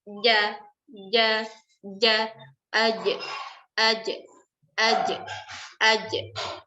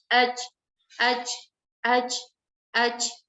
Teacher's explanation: Akan tetapi bunyinya jauh berbeda dikarenakan perbedaan sifat. Pada huruf jim kita harus rapatkan tengah lidah kita ke atas.